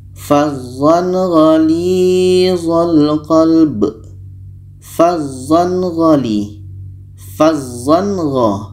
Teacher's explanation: Gha adalah huruf izhar halqi, maka ketika tanwin bertemu gha, ini hukumnya izhar halqi, dibaca jelas. Tanwin jelas, gha jelas, dan tidak ada dengung.